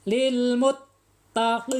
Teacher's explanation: tekankan suara kita ke huruf ta kemudian tahan sejenak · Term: tasdid